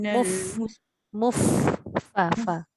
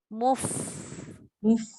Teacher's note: bukan bibir dengan bibir tau, macam bertiup tu. Gigi atas mesti kena bibir bawah.